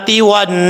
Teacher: آگے الف ہے، ایک الف کی مقدار لمبا کریں گے، سین پہ جب وقف کریں گے تو سین کو ساکن کر دیں گے